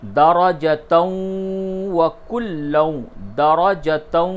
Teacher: دیکھیں واو کے اوپر تشدید نہیں ہے، لیکن چونکہ جو قاعدہ ہے کہ تنوین کے بعد واو آئے تو ادغام ہوگا، تو ادغام ہوگا تو واو پہ اپنے آپ تشدید آ جائے گا